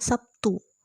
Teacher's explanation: di mana terlihat bahwa B berubah menjadi P karena pengaruh T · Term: asimilasi